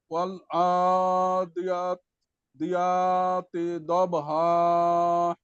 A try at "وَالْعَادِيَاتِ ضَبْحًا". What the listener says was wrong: আরেকটু মোটা হবে, শেষে হাঁটা একটু চাপ হবে। والعاديات ضبحا